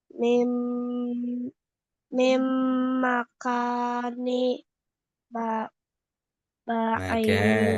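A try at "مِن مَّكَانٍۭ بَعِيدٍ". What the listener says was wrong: Makanim. Ini harakatnya bukan kasroh, tapi kasrotain ya. Maaf, nggak kelihatan ini kasrotainnya.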